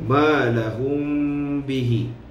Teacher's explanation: Jadi bacaannya, setengah pandangan ulama qurra ataupun ulama tajwid mengatakan mim mati bertemu dengan ba ini perlu kita tutup bibir, merapatkan bibir kita. Ada setengah pandangan kata seperti bacanya iqlab. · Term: ikhfa syafawi